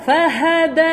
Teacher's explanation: Makhraj untuk huruf dal, hujung lidah belakang gigi atas.